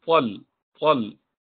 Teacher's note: It should be tal, elevating the base of the tongue.